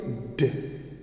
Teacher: It is voiced alveolar sound.